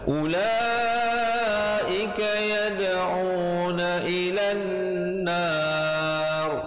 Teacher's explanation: Una ilan nar, ilan dengungkan di situ wajibul gunnah 2 harakat, barulah nar, dan rohnya menjadi tebal. Jangan baca nar, tak betul.